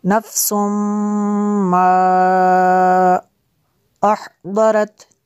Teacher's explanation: नफ्सुम मा अहदरत, ये इसके ऊपर जो मद है ये मद मुनफसिल है, क्योंकि हमज़ा दूसरे कलमे में है।